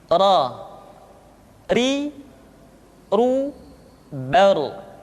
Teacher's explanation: Diucapkan dengan menyentuhkan punggung lidah dengan langit-langit. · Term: huruf ra